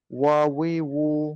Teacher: ওয়াও হরফটা কিন্তু দুই ঠোঁট থেকে উচ্চারিত